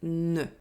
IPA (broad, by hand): n